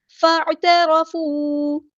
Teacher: فا کو ہم نے عین کے ساتھ ملا دینا ہے، حمزۃ الوصل ہمارا ڈراپ ہو جائے گا ، عین کو مستحرک یعنی مڈل تھروٹ سے ادا کریں گے،